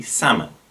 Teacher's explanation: this often gets pronounced with the l